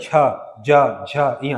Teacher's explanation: च बोलो तालु जाएगा जीभ से